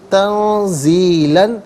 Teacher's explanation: حرف زا جو ہے حرف اخفا ہے تو نون ساکن کو اخفا کے ساتھ پڑھیں گے۔